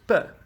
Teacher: O ponto de articulação aqui é bilabial, ou seja, é feito com os 2 lábios. O modo de articulação é plosivo ou obstruente.